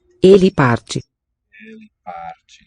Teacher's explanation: the accented vowels are really heavy and lengthened. So you have these great inequalities in the durations of stressed syllables versus unstressed ones, where in Spanish everything is kept on an even rhythmic pulse.